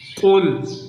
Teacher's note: قاف کو پر کر کے پڑھنا ہے، یعنی موٹا کر کے پڑھنا ہے